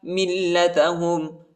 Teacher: میم کو لام کے ساتھ ملائیں گے، لام پر شد آیا ہے، اس کو سختی کے ساتھ شدت کے ساتھ پڑھیں گے، اور ادھر جو ہے وقف کریں گے۔